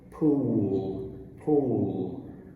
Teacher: practice this dark l remember your tongue pulls back it's really basically two sounds in one